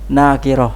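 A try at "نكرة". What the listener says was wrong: Enggak panjang nunnya. Nakirah. Pendek saja.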